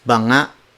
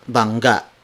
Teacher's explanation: But when you say banga, it refers to jar. And also, bangga has an additional G after the NG consonant.